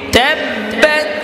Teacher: তাব্বাত হালকা বাতাস বের হবে, হামস।